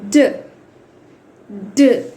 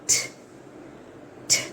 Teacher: while pronouncing డ you can experience vocal cord vibration ఇక్కడ డ అని పలికినప్పుడు మీకు వైబ్రేషన్ అనేది వస్తుంది అలాగే ట అని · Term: వాయిస్డ్ సౌండ్